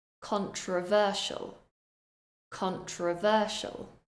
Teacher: I'm stressing syllable number 3